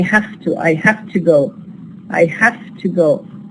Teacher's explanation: The va is not produced as va, we produce it as fa, again because the following sound here is ta, voiceless. So here we have the change, and because of this we have the change from va, voiced, to fa, voiceless. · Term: devoice the sound